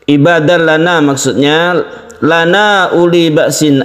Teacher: ada mat tabi'i bertemu dengan hamzah, di lain kata kita sebut dengan mad jaiz munfasil. Jaiz artinya boleh, ini boleh kita baca satu atau dua alif, itu disamakan mad jaiz munfasil.